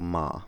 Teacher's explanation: There are five basic types of these, where a consonant can thus be, for example, a nasal, where air flow is directed also through the nose